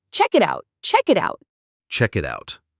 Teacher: the T at the end of it sounds a bit like a soft D when it links to out. So it sounds like check it out.